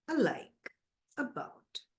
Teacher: we have short a sound okay little a sound which is Central unrounded vowel between half close and half open